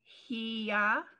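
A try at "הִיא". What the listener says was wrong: Just he, because there's no other vowel. He.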